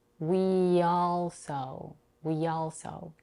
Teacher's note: I link these two words by inserting a y sound between them this happens when a word ends on a tense e sound